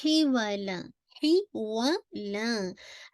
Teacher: हा की make sure कीजिए कि मिडिल ऑफ थ्रोट से निकालिएगा